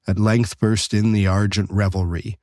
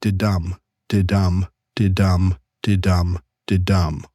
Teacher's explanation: you have an unstressed syllable followed by a stressed syllable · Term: iambic pentameter